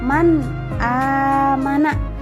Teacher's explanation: Di situ terletak nun sukun bertemu dengan alif, maka nun sukunnya ialah dibaca jelas. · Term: izhar